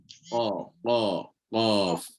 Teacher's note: bila kita sebut huruf q dia tak ada angin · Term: huruf qf